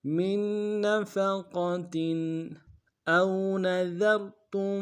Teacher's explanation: حمزہ کو واو کے ساتھ ملانا ہے، واولین بغیر کھینچے پڑیں گے، نون کو نمشہ ادا کریں گے، ذال کو را کے ساتھ ملانا ہے، ذال کو باریک ادا کریں گے، را کو موٹا ادا کریں گے، اور تا کو تم کو آگے من کے میم کے ساتھ ملانا ہے، تشدید ہے، زور دیں گے۔